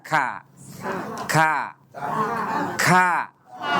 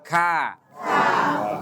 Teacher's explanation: Karena kaf itu asalnya ka. Ada suara hamasnya